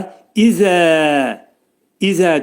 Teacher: Və burada dedikdə dodaqlar qönçələnir və ə deyirik və izə dedikdə pəltək zə deyirik zənni məxrəci dil iki dişin arasına girərək pəltək zə deyirik